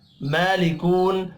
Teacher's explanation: کھڑی زبر ہے، ایک الف کے برابر کھینچ کر پڑھیں گے، لکو واو مدہ ہے، ایک الف کے برابر، اس کو بھی کھینچ کر پڑھنا ہے ، وقف کی صورت میں نون ساکن پڑھا جائے گا، اولم